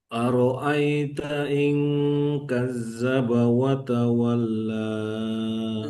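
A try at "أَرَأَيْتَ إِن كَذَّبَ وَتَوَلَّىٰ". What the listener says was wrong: Harus keluar dia lidahnya. Kadzdzaba wa tawalla.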